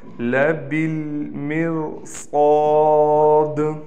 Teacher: اس با کو ہم ڈائریکٹ اس لام سے ملائیں گے، یہ الف نہیں پڑھا جائے گا